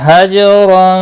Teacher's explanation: جیم ساکن پر قلقلہ ہوگا · تنوین کے بعد حروف اخفا کا جین آیا، اخفاء حقیقی ہوگا، غنہ کے ساتھ پڑھیں گے